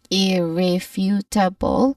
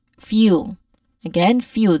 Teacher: our main stress is on the third syllable which is few